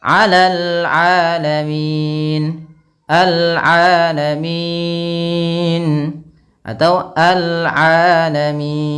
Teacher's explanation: Panjangnya berapa? Boleh 2 harokat, boleh 4 harokat, dan boleh pula 6 harokat. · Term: mad arid lis sukun